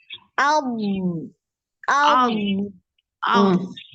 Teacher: Digigit. Jadi tepi lidahnya ini naik di gigi geraham ya. Jadi kayak digigit gitu. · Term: dialirkan